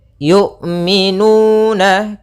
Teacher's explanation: Jahar yaitu tertahannya nafas kita, sedangkan syiddah yaitu tertahannya suara. Maka ketika melafalkan hamzah itu tidak ada nafas yang dialirkan dan tidak ada pula suara yang dialirkan, tapi dia suaranya tertahan dan nafasnya tertahan. Kemudian yu'minu, hati-hati jangan sampai terbaca dengan jangan dibaca dengan ain. · Yaitu dari pangkal, makhrajnya adalah pangkal tenggorokan kita yang dekat dengan dada.